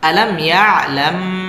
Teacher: الله يرى ألم يعلم بأن الله يرى আলাম এই মিমটা হচ্ছে মিম সাকিনে ইজহারে খাস এখানে গুন্না হবে না